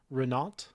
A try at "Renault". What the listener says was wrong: Renault. I don't think you pronounce the T.